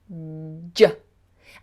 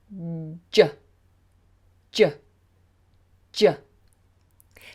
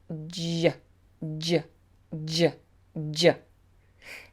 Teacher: there has to be this explosive sound but it's also a little bit fricative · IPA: /ʤ/